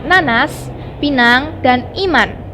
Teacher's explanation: Fonem N. Dilafalkan dengan cara menempatkan ujung lidah pada gigi atas. Lalu udara dari dalam dihembuskan keluar melalui rongga hidung. Ucapannya pada posisi awal maupun akhir sama.